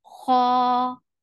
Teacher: Kha, kha is heavy and two counts long.